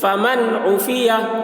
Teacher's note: फमन उफ़ी, या ज़बर या के ऊपर ज़बर है, ज़बर को जल्दी पढ़ें, थोड़ा भी ना खींचें। फमन उफ़िया, यहाँ पर इज़हार नून में हो रहा, नून साकिन के बाद हरूफ हल्की में से आइन आ रहा है।